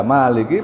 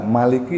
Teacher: Jadi selama tidak mengubah makna, boleh dibaca Maliki panjang, boleh dibaca Maliki pendek.